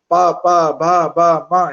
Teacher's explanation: ಪ, ಪ, ಬ, ಬ, ಮ ಹೇಳುವಾಗ ನಮ್ಮ ತುಟಿಗಳು ತಾಗಬೇಕು